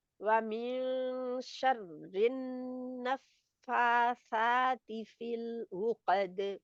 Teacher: فا اینڈ سا دونوں ہی 2 کاؤنٹ لمبے ہوں گے, یعنی دونوں ہی برابر کی لمبائی میں کھینچے جائیں گے